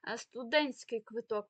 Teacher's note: студентський квиток ми не чуємо там літеру ти